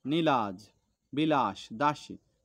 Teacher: ঠোঁট প্রসারিত হয় আর খোলার সময় এই ঠোঁটটা আমাদের অল্প পরিমাণ খোলে · জিভ একটু উঁচু হয়, আর সেটা সামনের দিকে উঁচু হয়।